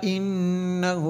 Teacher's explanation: نون مشدد ہے اس لیے غنہ کیا